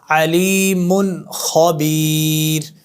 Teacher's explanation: ادھر بغیر غننے کے پڑھنا ہے، کیوں؟ نون تنوین کے بعد خا آ گیا ہے، تو خا آ جائے تو غنہ نہیں ہوتا